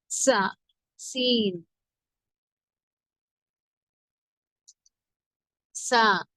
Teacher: நுனிநாவின் மேல் பகுதி மேல் கீழ் பற்களுக்கு இடையில் இணையும் போது உண்டாகும். குரல் மெல்லியதாக இருக்க வேண்டும்.